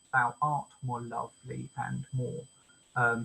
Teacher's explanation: So this is an anapest. Unstressed, unstressed, stressed.